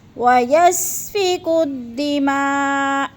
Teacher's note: بعد حمزہ ایک ہی کلمے میں آ گیا تو مد متصل، چار الفی مد ہے، ہم نے اس کو چار حرکات کے برابر لمبا کر کے پڑھنا ہے